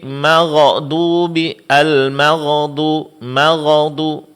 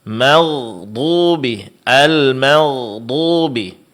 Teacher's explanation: Kesalahan yang lain ketika huruf ghain berbaris sukun, ketika ghain dalam keadaan sukun, sering ghainnya dibaca seperti diqalqalakan.